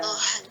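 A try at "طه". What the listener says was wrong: Toha. 2 aja, nggak boleh lebih.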